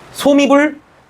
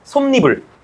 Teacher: 모음 이로 시작하면 그 사이에 뭐가 첨가된다? 니은이 첨가된다.